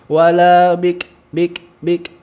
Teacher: huruf Kaf hameskan ada percikan nafas